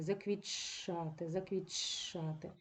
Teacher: Т втрачає свою особливість і збігається з ч ми будемо вимовляти ч подовжени заквітшати заквітшати і коритце точно так